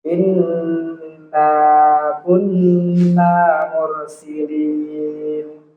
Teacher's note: Iya, jadi nun bertasdid harus ditempo ya.